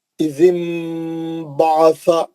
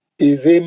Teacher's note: हम वो नून को क्या कर रहे हैं, मीम में बदल दे रहे हैं और गुन्ने से पढ़ रहे हैं। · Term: इखलाब